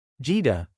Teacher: the word Jida, spoken with a high tone, means house